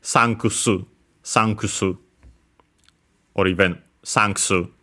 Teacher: because the U in ku is between unvoiced consonant, is barely heard, if at all. And so, yeah, even more similar to English, sankusu, sankusu, or even sanksu.